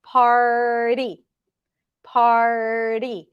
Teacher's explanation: now to get to the flap T it has to be really quick